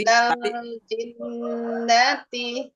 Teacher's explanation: Jadi ditahan dua harokat gunnah.